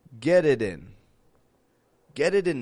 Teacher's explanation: you hear that two flap te's there get it in get it in I'm linking three words together